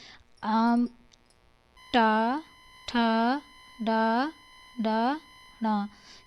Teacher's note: आपके जीभ का जो पार्ट है वो तालू में बीचा बीच में लगता है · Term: मूर्धन्य